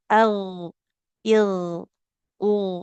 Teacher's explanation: dari sifatnya huruf gin itu tebal. Kemudian harus mengalirkan suara. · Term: gin sukun